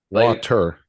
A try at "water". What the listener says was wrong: You don't say E, do you? You make a glottal stop. Say T.